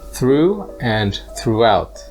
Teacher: in these words it's pronounced like a long ew like in the word true